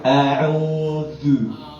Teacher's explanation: digigit sedikit ujung lidah ketemu dengan gigi seri atas.